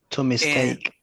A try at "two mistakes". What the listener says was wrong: Remember the S, final sound.